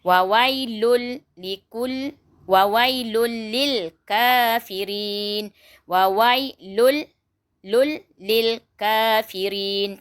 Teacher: Jangan baca dengung. Kita masukkan je huruf lam ke dalam tanwin tadi tapi tak didengungkan. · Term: idgham bila gunnah